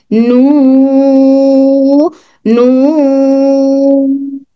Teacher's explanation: नू नू नू, नून यहाँ से अदा हो रहा, नून यहाँ से दिखाई दे रहा, होंठ इस तरह से होते हैं हमारे होंठ, उसके बाद जबान यहाँ पे टच होकर नू, यहाँ से नू, यहाँ पे नू, यहाँ से, और नाक में से आवाज आती है नून की। नून की आवाज नाक से भी अदा होती है